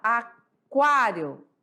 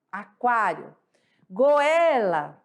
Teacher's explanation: ditongo crescente certo porque a segunda vogal do ditongo é a mais forte